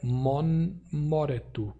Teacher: a nasalidade do M causou a nasalidade do T virar N na primeira instância